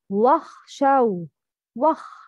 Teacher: It's not wakha shaw, no, no vibration.